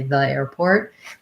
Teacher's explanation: i tend to use the with the schwa even when there's a vowel so i might say the airport the rule is to say